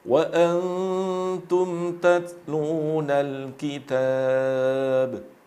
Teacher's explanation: Qalqalah dari huruf ba jangan sampai berakhiran dengan hamzah